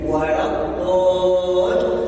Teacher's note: menaikkan intonasi ketika bertemu di lam tasdid